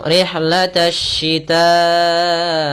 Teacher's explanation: alif dan lamnya tertulis tapi tidak dibaca. Maka kita langsung rihlatash shita'i. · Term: alif lam syamsiyah